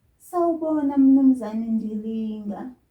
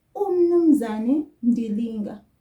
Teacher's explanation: Did you hear that I didn't have U before Mnumzane?